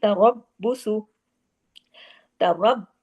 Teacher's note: با جو ہے 2 دفعہ پڑھنے میں آنا چاہیے، اور را ہیوی ہوگا زبر کی وجہ سے